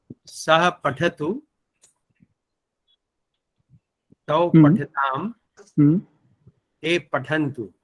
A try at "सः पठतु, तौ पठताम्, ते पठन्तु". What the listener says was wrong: सुन्दरम्।